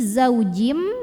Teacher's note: karena ada tanwin kasrah yang bertemu dengan huruf mim maka tanwin kasrahnya masuk lebur ke mim disertai bunyi dengung jadi ini zaujim masuk ke mim dan bunyi m-nya nya tahan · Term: idgham bhunah